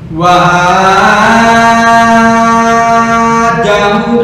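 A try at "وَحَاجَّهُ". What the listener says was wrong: Nah, tasdidnya jadi hilang. Wa jahu qaumu ha jahu qaumu hu kepanjangan. Ini hanya dua harokat, jangan lebih.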